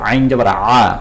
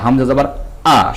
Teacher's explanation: আইনটা গলা চিপে আইন জবার আ আর হামজা জবার আ শক্তভাবে